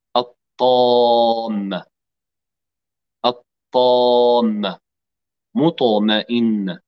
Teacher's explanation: الطاء هنا طرف اللسان مع أصول الثنايا العليا، ولكن في الطاء يتقعر وسط اللسان دائما عند التفخيم. وسط اللسان يقدم جهدا، يقدم عملا إضافيا من أجل إعطاء صوت التفخيم لهذا الحرف، سواء كان طاء أو لاما أو راء.